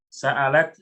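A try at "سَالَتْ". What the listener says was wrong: Bukan, kan nggak ada kepala hamzah, kok pakai sa'alat bacanya? Iya, kalau sa'alat bertanya, kalau sa'alat mengalir, beda artinya nanti. Oke, salat bidumu, yaitu mengalir ya air matanya.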